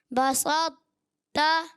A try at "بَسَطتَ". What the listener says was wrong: بسط, موٹا کرنا ہے. بسط تا.